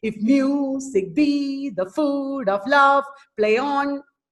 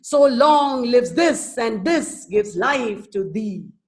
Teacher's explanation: the second syllable in the foot is getting stressed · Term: iambic pentameter